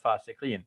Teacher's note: I'm dropping that last a because when we're stopping we're going to drop the last short vowel at the end